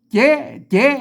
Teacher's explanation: เจ๊เสียงจัตวานะครับเอาออกเสียงตามเชียงใหม่นะครับ